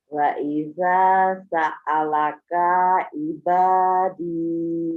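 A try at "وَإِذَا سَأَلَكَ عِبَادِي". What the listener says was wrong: Kaknya pendek. Yang panjang da sama ibadi. Da sama ibadi. Yang lainnya pendek.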